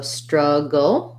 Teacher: When I just say struggle, we have a dark L there, so struggle.